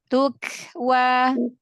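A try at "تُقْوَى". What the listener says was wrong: Panjangan. Kepanjangan. Pendekin lagi Umu. Nanti kepanjangan.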